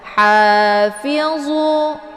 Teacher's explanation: dibacanya tipis kemudian agak berdesis angin karena ha ini adalah sifatnya hamas. Jadi dia posisinya letak di tenggorokan bagian tengah sejajar dengan huruf ain.